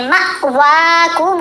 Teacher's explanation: میم کو بھی ہم نے حمزہ سے جب ملانا ہے تو جھٹکا دے کر پڑھنا ہے, مأواکم النار ہی مولاکم.